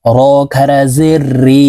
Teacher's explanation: খারা জেরের উচ্চারণ নিচের দিকে ধাবিত করে এক আলিফ টেনে উচ্চারণ করতে হবে র খারা জের রি হা খারা জের হি জিম খারাজের জি